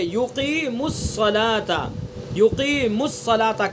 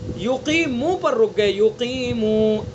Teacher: دیکھیں یقیم الصلاة، یقیم الصلاة کہیں حرف مد نہیں ہے. یقیم الصلاة میم کے اوپر پیش پڑھا جا رہا ہے اور پیش کو صاد میں ملایا جا رہا ہے. لیکن اگر ہم یقیمو پر رک گئے، یقیمو، اب یہاں واو حرف مد ثابت ہو گیا. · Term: وصل